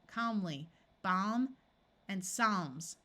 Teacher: the a will have its broad sound of a and the L will be silent